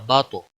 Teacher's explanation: तो पे कलकला होगा और ये मोटा भी पढ़ा जाएगा क्योंकि हरूफ मुस्तालिया में से है।